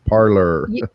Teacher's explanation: You need the hard rolling R.